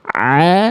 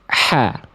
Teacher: Ain a nggak pakai nafas dari tengah tenggorokan, ha kecil dari tengah tenggorokan tapi pakai nafas, ha. Hamzah dari pangkal tenggorokan nggak pakai nafas, a.